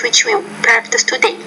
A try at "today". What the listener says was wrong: Now say that word today, not today, but today. A, you need to make that vowel longer, which we practice today.